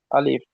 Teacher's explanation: তাহলে এই আলিফটা কিন্তু টান হয় না, বলবেন আলিফ